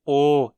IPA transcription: oː